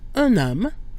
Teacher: Notice that un loses its nasal quality when followed by a vowel or, as in this case, a mute H. So we get un homme, where we pronounce the N instead of un homme.